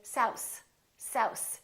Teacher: The voiceless TH, if it's not done correctly, might sound like an S. · Some people, instead of saying south, they say souse, souse, because they're pulling in their tongue too much.